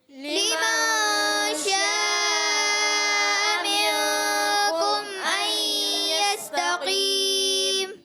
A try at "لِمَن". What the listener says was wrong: لمن, لام کی زیر کو کھینچنا نہیں ہے. لمن, یہاں پر قاعدہ ہے نون ساکن کے قاعدوں میں سے قاعدہ اخفا کا قاعدہ.